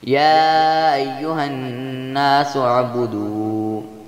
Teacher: نون مشدد ہے جس لیے اس پر غنہ کیا جائے گا